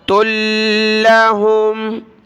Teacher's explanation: وآیۃ لہم، تا کو لام کے ساتھ ملایا، لام کے اوپر تشدید ہے تو اس کو سخت کریں گے، تا لام دو پیش، تل لام زبر لا، تل ہا میم پیش ہوم، تل لہم۔